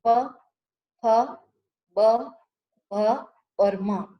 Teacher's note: ये पांचों व्यंजन का उच्चारण ओठ आपस में स्पर्श करते हैं, तभी उनका उच्चारण होता है। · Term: ओष्ठ व्यंजन